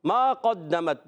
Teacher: قاف حروف مستعلیہ میں سے زبان کی جڑ و تعلق کے نرم حصے سے قاف ادا ہوتا ہے